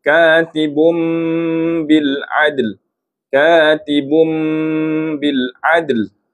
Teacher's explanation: iqlab bacaannya dengung dua harakat